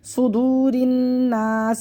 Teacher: یہ واو مدہ آیا، واو ساکن سے پہلے پیش، اس کو ہمیں کھینچا